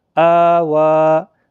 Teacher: حمزہ کھڑا زبر آ، واو کھڑا زبر وا، آوا، دونوں کو ایک ایک الف کے برابر کھینچنا ہے کیونکہ ان کے اوپر کھڑا زبر ہے